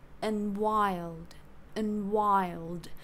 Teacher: losing the D in and yeah and using the weak form